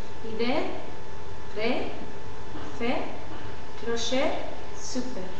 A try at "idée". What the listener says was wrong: Voilà, c'est très bien, mais il faut marquer un peu plus la prononciation « et ». Alors, idée. Alors, c'est comme si tu fais un faux sourire. Alors, les lèvres doivent être très tendues en arrière.